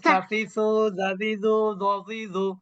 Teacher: এই তিনটি অক্ষর জিহ্বার আগা উপরের দাঁতের আগার সাথে যুক্ত হয়ে উচ্চারিত হয়